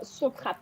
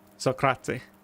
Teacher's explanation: I end it on the T because I'm from the north. If I was from the south, I would add a sort of like breath sound that makes the word a lot longer.